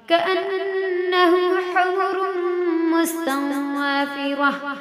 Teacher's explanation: کأن میں نون پہ تشدید غنہ ہوگا